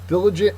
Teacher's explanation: Diligent is an adjective. It means hardworking. The first syllable is accented.